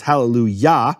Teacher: Yah is always the emphasized syllable